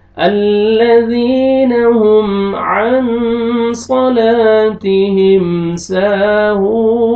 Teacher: نون ساکن کے بعد حروف اخفا میں سے صاد ہے آپ نے اخفا کرنا ہے نوز میں ساؤنڈ لے کے جائیں گے